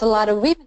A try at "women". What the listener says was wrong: Now, I want you to keep it, and I know VW is tricky. Make the V long. It's not an F, it's a V.